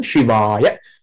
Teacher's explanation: A is also short at the end, so in the middle, it's a longer vowel, A as in father, long A.